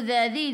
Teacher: di ujung lidah keluar pada gigi depan